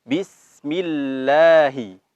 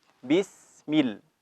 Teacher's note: ketika lam bertasydid, maka lidah kita naik ke langit-langit.